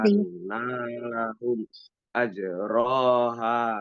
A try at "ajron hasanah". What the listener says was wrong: ajron hasanah. dibaca panjang, ha mada asli dibaca panjang. Anna itu gunnah tidak dibaca panjang tapi ditekan 2 ketukan. Ajron hasana. Tanwin menghadapi ha itu izhar dibacanya jelas.